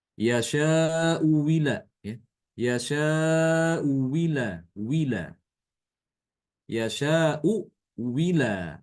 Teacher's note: wajah yang kedua adalah mengganti hamzah kedua itu dengan huruf wawu. Wawu kasroh.